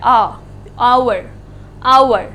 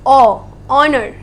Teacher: दोनों केसेस में H silent है. H को हम प्रोनाउंस नहीं कर रहे हैं